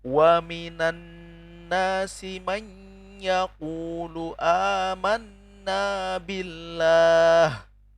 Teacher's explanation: Itu nun sukun bertemu dengan ya. Di sana kita wajib untuk mendengungkan ya. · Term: idgham bi gunnah